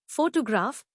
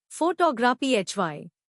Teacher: the stress is on the first syllable, photograph, while in photography, the stress is on the second syllable, photography.